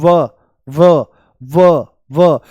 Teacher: और व जो है हमारा इसका उच्चारण होता है दंत ओष्ठ है ना दांत ये दंत ओष्ठ है दंत ओष्ठय दांत और होठ दोनों से इसका उच्चारण होता है जैसे बोल दो व व व तो जो ऊपर वाले दांत हैं ये होठों से मिल जाते हैं आप बोल के देखो आप बोल के देखो आपको तुरंत पता लगेगा इसमें दंत ओष्ठ हैं यह तो इसके उच्चारण में जो दांत हैं इसके उच्चारण में जो दांत हैं। · जैसे बोल दो व व व व, तो जो ऊपर वाले दांत हैं ये होठों से मिल जाते हैं।